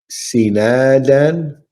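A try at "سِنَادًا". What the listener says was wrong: Yes, sinadan.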